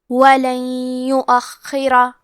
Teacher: کلمت ولن کے آخری میں نون ساکن ہے، پھر حرف الیا ہے کلمت یؤخرہ، یہاں حکم ہے ادغام بغنہ، تو ہم یہ حکم کو غنہ اور تشدید کے ساتھ ادا کریں گے۔ وَلَن يُؤَخِّرَ، کلمت یؤخرہ میں خا پہ تشدید ہے، تو ہمیں 2 حرف کے برابر خا کو پڑھنا ہے، اور ہم یہ حرف کو موٹی آواز میں بھی پڑھیں گے۔